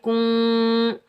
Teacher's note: کاف کو نون کے ساتھ ملائیں گے، بغیر کھینچے پڑھیں گے